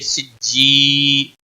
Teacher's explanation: یا مدہ ہے ایک الف کے برابر کھینچ کر پڑھیں گے